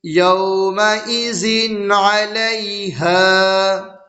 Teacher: تنوین کی آواز کو ظاہر کر کے بغیر گناہ کے جلد پڑھیں گے، اس کو اظہار کہتے ہیں۔